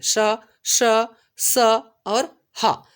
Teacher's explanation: ऊष्म व्यंजन आपका ऐसा व्यंजन है जिसको उच्चारण करते समय जो वायु निकलती है वो घर्षण के साथ निकलती है ना। तो जैसे ही आप इसका उच्चारण करते हो तो आपको ऐसा लगेगा कि थोड़ा सा जो है दबाव पड़ रहा है आपके मुख में, और आपका हवा जो है वो थोड़ा सा घर्षण के साथ बाहर निकलता है।